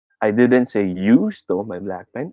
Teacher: i put my emphasis on you